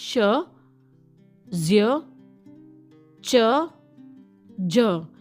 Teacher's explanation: जो टंग है वह टच कर रही है आपका जो अल्वियोलस और हार्ड पैलेट के बीच का हिस्सा और यह एक कॉमिनेशन है जैसे पता ही लग रहा है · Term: पलेटो एलविल